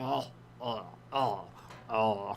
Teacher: kind of like the lowest sound you can make in your throat